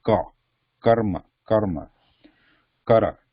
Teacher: So here, when you pronounce this, there is no h element to it. It should not be sounding like kara.